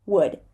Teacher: The oo, but without the lips going forward.